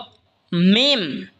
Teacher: মিমও দুই ঠোঁট হইতে উচ্চারণ হবে, বা যেখান থেকে উচ্চারণ হয়েছে সেখান থেকে মিমও উচ্চারণ হবে।